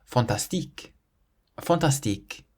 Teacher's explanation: We stress the tique part at the end